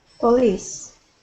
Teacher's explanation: the stress is at the end of the word police